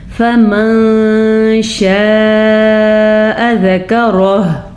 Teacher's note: नून साकिन की आवाज़ को किसी हद तक हम छुपा के पढ़ेंगे, इसी को इख्फा कहते हैं। और ज़करह में रॉ को पूर पढ़ेंगे और हा जो है उसको वक्फ की हालत में उसकी आवाज़ निकालनी होगी। और यहाँ पे एक और ख़ास चीज़ है, आयत के ऊपर आपको मीम का निशान नज़र आ रहा है और साइड पे भी लिखा हुआ वक्फ़ लाजिम।